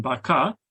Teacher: Lastly, the syllable final R at the end of a syllable. In Sebutan Johor Riau, this R is silent, as in baka, and this silence is represented by the null symbol that you see on the table.